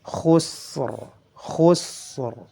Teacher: Adapun ra memiliki sifat jahar, nafasnya ditahan suaranya dialirkan, dan sifat takrirnya dilafalkan. Khusr, khusr, ditebalkan.